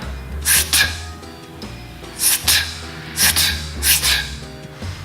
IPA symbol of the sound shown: st